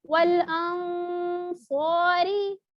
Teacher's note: والانصاری, ٹھیک ہے یہاں پہ دیکھیں صاد آ رہا ہے نا, صاد آ رہا ہے تو اس کو موٹا کر کے والانصاری اس طرح ناک میں آواز تو جاری ہے, ساتھ اس کا صاد کا مخرج جو ہے وہ بھی جیسے اوپر کی طرف ہوتا ہے نا اس طرح سے آپ کریں گے, منہ بھر کے جیسے کہتے ہیں.